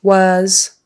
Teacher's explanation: the S on the end is really a z was start with a W lips come together and not was